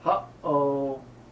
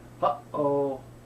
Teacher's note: There's what they call a double glottal stop. Glottal stop is in English when you use this little expression, "huh-oh," that in the middle.